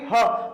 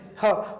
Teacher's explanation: तो ह जो है कंठ से बोला जाएगा, ह बोल के देखेंगे, ह।